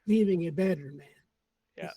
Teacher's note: the voiceless T becomes D voice sound